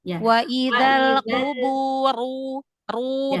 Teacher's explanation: semua ro yang dibaca tebal tebalkan. Angkat pangkal lidahnya.